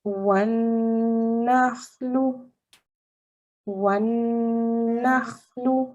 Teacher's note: I'm holding on to the noon to give it a nasalized sound because this is a noon mushaddad